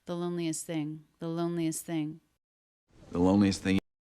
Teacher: the T in loneliest is dropped it's not uncommon to drop the T between two other consonants here it comes between s it comes between the unvoiced th